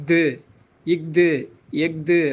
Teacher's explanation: அப்புறம் ஆயுத எழுத்து ஆகிய அக் அப்படிம்போல அக்து, இக்து, எக்து, அந்த நடுவில் வரக்கூடிய அக், இக், எக் அப்படின்னு சொல்கிறோம் இல்லைங்களா, அந்த ஆயுத எழுத்து ஆகிய அக்குக்கு அரை மாத்திரை